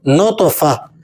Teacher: تا دو زیر تن، نطفتن، وقفاً نطفہ. گول تا پر جب آپ وقف کریں تو اسے ہا پڑھیں گے، اس لیے جب ہم یہاں وقف کر رہے ہیں، وقفاً کے بعد ہم اسے پڑھ رہے ہیں تو ہم اسے ادا کر رہے ہیں نطفہ، نطفتن، وقفاً نطفہ.